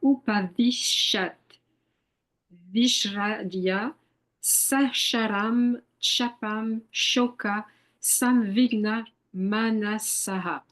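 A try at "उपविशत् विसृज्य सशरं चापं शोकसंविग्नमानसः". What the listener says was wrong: That was pretty good generally, but I'm trying to wean you away from giving your native French values to the vowels. So, for example, chapam, chapam. You say also say visrijya, visrijya.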